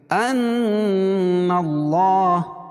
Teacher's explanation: نون مشدد ہے اس میں غنہ ہوگا